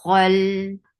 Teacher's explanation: kha is heavy, but it has infitah.